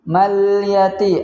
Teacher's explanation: ada alif lam al-qamariyah, yaitu kita baca dengan bacaan yang jelas, jangan kita pantulkan.